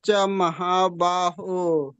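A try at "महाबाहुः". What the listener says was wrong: ಎರಡು ಹಕಾರನು ಇದೆ ನ ಹಕಾರ ಸೇರಿಸ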